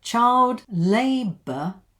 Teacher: one stress, so it goes up